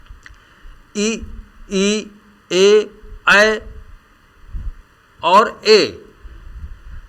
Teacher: इनके उच्चारण में जीभ का अगला भाग भाग ले रहा है